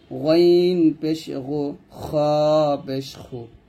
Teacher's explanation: আর গাইন খ গলার শেষ থেকে উচ্চারণ করব